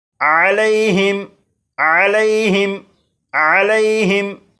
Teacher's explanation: इस लफ्ज़ के आखिर में मीम साकिन है और मीम साकिन के बाद तो है, लिहाजा इस मीम साकिन में गुन्ना नहीं करेंगे। और यहाँ पर यालीन है, इसलिए लाम को बग़ैर खींचे पढ़ेंगे